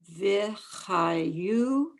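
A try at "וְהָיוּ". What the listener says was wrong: v'hayu. Don't make it so ha. Not ha, ha, h.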